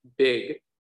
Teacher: our vocal cords are buzzing throughout the whole thing